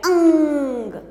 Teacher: जहाँ पर हमारी अंग की बिंदी का उच्चारण होता है वहाँ से हमारी नाक से ध्वनि निकलने लगती है अंग। आप बोल के देखेंगे तो आप अपनी नाक पर भी हाथ रख के देखिए तो अंग, इसमें से हमारे को एक ध्वनि सी महसूस होगी, वहाँ पर हमारी अंग की बिंदी का उच्चारण होता है।